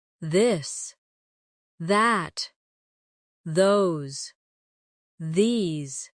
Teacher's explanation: the softer version of th where you let your tongue touch your teeth lightly, but use your voice.